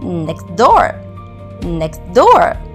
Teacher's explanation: For example, in the phrase next door, the t sound in next is often silent, resulting in next door, next door. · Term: elision